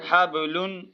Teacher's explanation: غنہ نہیں ہوگا کیونکہ آگے حروف حلقی کے 6 حرفوں میں سے خا آ رہا ہے